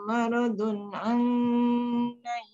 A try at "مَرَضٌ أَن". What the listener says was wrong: jangan dengung situ maradun allai sikit je allai